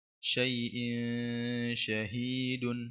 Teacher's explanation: همزة تنوين بالكسر مخفى عند الشين المفتوحة بغن حركتين